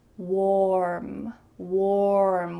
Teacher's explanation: Notice how my lips are in an O shape. Warm. Warm with a clear R.